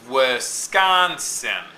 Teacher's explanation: unstressed stressed followed by unstressed